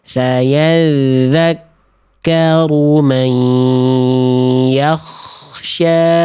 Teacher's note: Jadi kayak H kecil ya. Ah H kecil itu karakter nafasnya lebih lembut dari tengah tenggorokan makhrajnya. · Ah H kecil itu karakter nafasnya lebih lembut dari tengah tenggorokan makhrajnya. Kalau K lebih ada kasar sedikit dari ujung tenggorokan makhrajnya. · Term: k sukun, K sukun